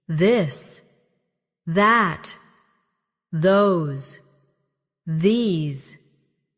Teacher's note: the softer version of th where you let your tongue touch your teeth lightly but use your voice